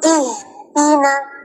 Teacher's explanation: So ha bagi angin yang keras sikit.